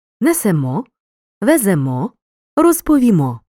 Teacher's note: у першій особі множини ми наголос на останньому складі